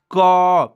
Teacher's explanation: तो क जो आप बोलेंगे तो आप देखेंगे कि क में अ आता है लास्ट में